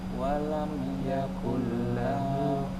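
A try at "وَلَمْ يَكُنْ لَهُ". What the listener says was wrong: La-nya tidak dipanjang.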